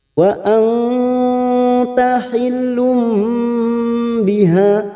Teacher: Wa anta hillum, hil masuk pada huruf lam, hil duma tanwin yang bertemu ba, namanya bacaan iklab, membalik dan menukar, seperti bertemu dengan huruf mim di sini. Lum ada tanda mim kecil, lumbi, tapi masuk pada huruf ba, siap membunyikan huruf ba.